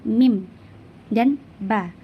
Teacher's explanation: huruf mim dan ba keluar dari dua bibir yang dirapatkan